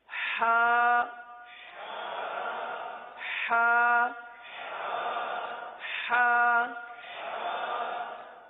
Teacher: اس حرف کا مخرج کیا ہے؟ حلق کا درمیان، وسط حلق